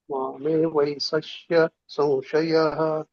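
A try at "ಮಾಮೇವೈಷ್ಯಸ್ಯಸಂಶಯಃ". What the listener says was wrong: ಅಲ್ಲಿ ಮೂರ್ಧನಿಶ ಬರ್ತಾ ಇಲ್ಲ ನಿಮ್ದು, ಬಟ್ ಪ್ರಯತ್ನ ಮಾಡಿದ್ದು ಒಳ್ಳೇದಿತ್ತು.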